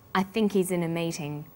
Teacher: the word think is stressed in this sentence and he's is unstressed when these words are linked the h is dropped